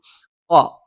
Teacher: ഖ നാവിന്റെ ആരംഭം മേലെ അണ്ണാക്കിലാണ്.